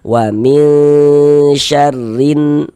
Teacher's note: kita tahan sejenak suara kita. Kita panjangkan kira-kira sepanjang dua harakat. Kita ghunahkan. Kita dengungkan. Wamin syarrin huruf sanya pendek ya.